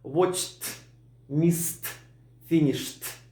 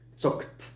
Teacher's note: Если попадаются глаголы, оканчивающиеся на свистящие шипящие звуки, типа «с», «ч», «ш», или на глухую согласную, тогда в прошлом времени они прозвучат с окончанием «т».